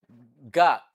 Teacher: is a voiced velar plosive